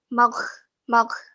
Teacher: karena gho itu g sama H kamu g-nya enggak boleh hilang enggak boleh ketutup sama si h